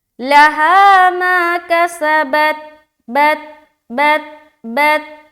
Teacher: آگے ما کسبت، ما میں پھر الف مدہ، کسبت، سین کو سٹی کی طرح، با تا زبر بت. یہاں پر پھر وہی خیال رکھنا ہے کہ تا میں قلقلہ نہ ہو،